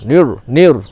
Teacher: ni bertemu dengan ro. Jangan sampai ni-nya menjadi tebal. Nir, nir. Nah, tetap tipis.